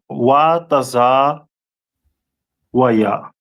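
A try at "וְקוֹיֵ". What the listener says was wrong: Not taza, but wa. Wakwa. We do the preposition. It's like you wakwa wa ya.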